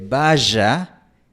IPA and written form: 'ba.ʒa (vaya)